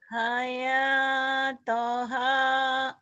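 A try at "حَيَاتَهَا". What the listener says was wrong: Hayatoha bukan to. Hayataha.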